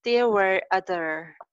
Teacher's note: आर बोलते हुए जुबान कहीं टच नहीं करनी है ना, ऊपर नीचे. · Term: र साउंड